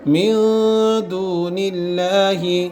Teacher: نون ساکن کے بعد دال اخفا ہوگا, لفظ اللہ سے پہلے زیر, لفظ اللہ کا لام باریک پڑھا جائے گا.